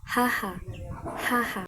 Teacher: Dito sa lalamunan mismo nanggagaling yung tunog. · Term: glutal